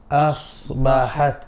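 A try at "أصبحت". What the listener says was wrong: Sword more heavy. Asbahat. You're saying us. No, not us. Asbahat.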